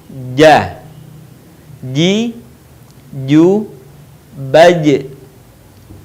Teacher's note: huruf ini dilafalkan dengan menyentuhkan Tengah lidah kita ke daerah langit-langit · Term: huruf ja